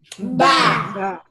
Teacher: the ba is pronounced with the two lips